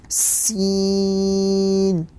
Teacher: زبان کی نوک کو نیچے کے دو دانتوں کے جڑ میں لگانے سے سین ادا ہوتا ہے